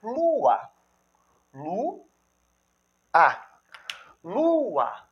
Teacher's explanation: Esse Lu aqui é forte. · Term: O Lu é tônico